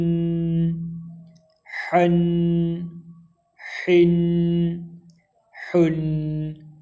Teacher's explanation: اس کی آواز بالکل حلق سے ادا ہوتی ہے، حلق کے درمیان والے حصہ سے۔